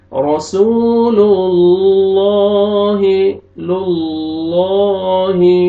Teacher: اللہ سبحانہ و تعالی کے نام سے پہلے پیش آ رہا ہے تو لام کو موٹا کریں گے اور پر کریں گے